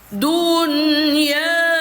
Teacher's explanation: Maka ya hukumnya sekarang menjadi mad jaiz munfasil. P4 panjangnya empat harakat atau empat ketukan